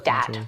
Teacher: TH stopping, so that might be using something like a D sound for where you see a written TH. So dat for that.